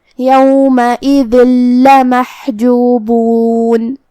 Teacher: हम ये तनवीन को लाम में मिला के तशदीद के साथ लेकिन बग़ैर गुन्ना से हुक्म को अदा करेंगे। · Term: इदगाम बग़ैर गुन्ना